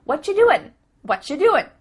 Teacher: the end of the word doing that g also gets cut out